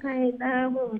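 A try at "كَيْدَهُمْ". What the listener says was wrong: কাইদাহুম দালটা আরো একটু শর্ট হইব। কাইদাহুম দা খয়াও জেমগি হুম। কাইদাহুম।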